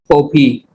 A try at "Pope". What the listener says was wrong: It's not Popey. We don't pronounce the E. It's just the Pope.